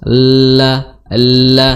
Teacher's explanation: dari tepi lidah sampai ujungnya ini menyentuh, ya, gigi seri gusi gigi seri atas, la seperti itu, ya. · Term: lam